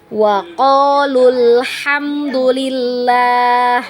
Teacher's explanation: kita pelajari sekarang adalah cara membaca huruf madnya ketika kita washol maka huruf madnya ini kita pendekkan ya Jadi kita tidak baca panjang kecuali kita waqof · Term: huruf mat